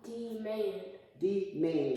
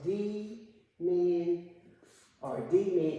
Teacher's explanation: Yes, so the voice raised on that second syllable. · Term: accent